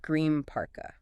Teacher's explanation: Because your lips are already moving to form that P sound in parka, the N in green physically morphs into an M. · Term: assimilation